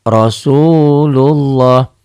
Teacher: Jadi O-nya ya saya tulis O, nggak Rasulullah ya. Kemudian lafaz Allahnya seakan-akan ini ada W, tapi W-nya jangan nempel · Lafaz Allah ini dibaca tebal, berbunyi O, Rasulullah, terjadi apabila sebelum lafaz Allah ada huruf yang berbaris di atas tuh.